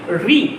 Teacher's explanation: तो री जब बोलेंगे ना तो जीभ खड़ी होगी, री, तो री जो जाता है वो मूर्धा में जाता है